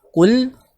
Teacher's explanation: qaf dhammah tebal, masuk ke lam sukun dialirkan. Qul. Kemudian lam di sini tipis, jangan dibacanya qul, tapi qul.